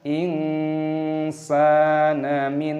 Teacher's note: nun sukun bertemu dengan nun, hukumnya dibaca idgham bi gunnah, dimasukkan dan disertai berdengung